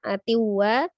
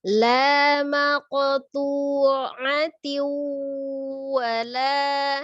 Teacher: Atiu, ada kasrah tanwin di huruf ta marbutohnya bertemu dengan waw, idgham bi gunnah ya, idgham dilebur, asalnya tin menjadi tiu. Kemudian disertai dengan gunnah dengan dengung, maka ditahan 2 sampai 3 harokat ya, tidak cepat-cepat.